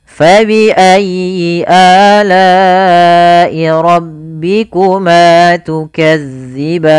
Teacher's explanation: Pada lafal fa alirkan nafas, ayyi tekan huruf ya-nya, kemudian a mad badal, lai ada bacaan mad wajib muttasil yang dimana kita harus memanjangkan la-nya sepanjang 4 harokat